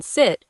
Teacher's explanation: And the i sound like in sit is made with your tongue slightly lower and farther back.